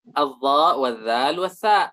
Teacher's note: Ujung lidah dengan ujung gigi seri. Keluarlah tiga huruf.